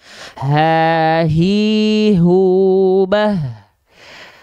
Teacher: Hak besar tuh, dia punya sifat hams. Tapi dia kadarnya mengalir nafas, bukan percikan nafas.